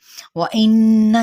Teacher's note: وَإِنَّ یہاں پہ نون پہ مشدد ہے اور اس پہ غنہ کرنا ہے، یعنی ناک میں تھوڑی دیر آواز کو ٹھہرانا، یعنی گنگناہٹ کے ساتھ۔